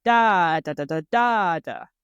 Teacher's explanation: a really big long loud sound at the end of the phrase and in the middle there's often sort of a series of faster syllables